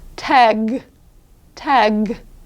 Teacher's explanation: For TAG, however, which is a deeper guttural -- what we call more guttural -- Hard G, it's below the K